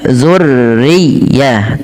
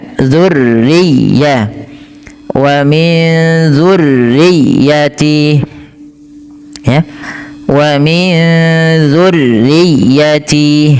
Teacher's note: Ada yang juga kadang-kadang ini karena dua tasydid yang gandeng kadang kita kurang perhatian. Kadang dibaca zurati zuriyati tidak dibaca rnya harusnya ditekan dulu rnya